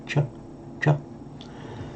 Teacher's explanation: It's called a palatal because the tongue is not against the teeth and it's not curled back, retroflex. It's on the hard palate just behind this ch, ch.